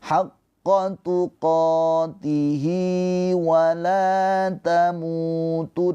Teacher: Ha dhamir tidak bertemu dengan hamzah, maka ha dhamir ini namanya mad silah qasirah. Panjangnya 2 harokat hi-nya.